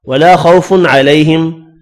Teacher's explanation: الف مدہ کو ایک الف کی مقدار میں کھینچ کر پڑھنا ہے